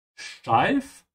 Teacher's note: Remember to pronounce the st like sh. Yeah, because the s is before a t.